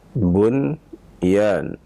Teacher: Kalimat bunyan dibaca dengan jelas. Tidak boleh kita memang idghamkan. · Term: izhar